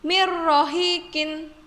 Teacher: Ro-nya ditasydidkan dan dibacanya tanpa dengung atau jelas. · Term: idgham bilaguna